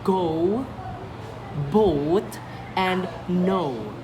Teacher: the lips are rounded and the tongue moves from the midback and high back position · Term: long O